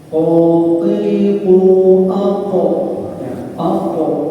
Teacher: Jadi huruf qaf itu ada kolkolahnya atau pantulannya. Ini makanya di antaranya huruf qaf itu yaitu mempunyai sifat sidah, kemudian juga huruf yang mempunyai sifat kolkolah atau kolkolah ya. · Jadi keluar huruf qaf dari pangkal lidah bertemu dengan sesuatu yang di atasnya, yakni langit-langit bagian atas.